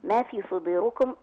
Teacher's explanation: الالف اللي بعد الميم مد طبيعي حركتين